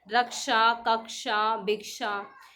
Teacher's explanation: तो ये इसके अंदर क और श का समावेश होता है